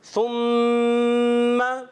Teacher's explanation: ثم میم مشدد میں ایک الف کا غنہ کرتے ہیں. ثم سا کی ادائیگی کلیئر رہنی چاہیے, سین سے نہیں بدلنا چاہیے.